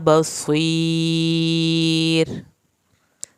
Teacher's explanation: रा को आखिर में पतला पढ़ना है, रा को पुर नहीं करना